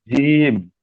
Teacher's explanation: তিন আলিফ পরিমাণ টান আছে, টান দিয়ে পড়েন